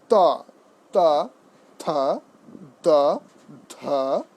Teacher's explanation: প্রসারিত জিভের দ্বারা দন্ত স্পর্শ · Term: দন্তবর্ণ